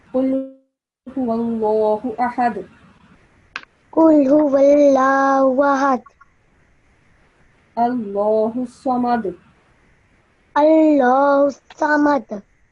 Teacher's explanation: So we have to produce a slight jerking sound on all of these dal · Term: qalqala